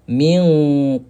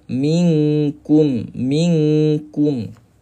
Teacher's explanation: Kalau qaf bunyi dia tebal minq. Kalau kaf minkum minkum.